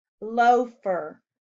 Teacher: Loafer has a long O sound in the first syllable.